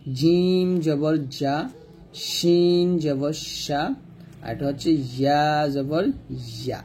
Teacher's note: জিম শিন ইয়া উচ্চারণ করার সময় জিহ্বার মধ্যখানটা উপর তালুর সঙ্গে লাগাতেই হবে, না লাগালে কিন্তু উচ্চারণটা সুন্দর হবে না বা উচ্চারণ হবেই না।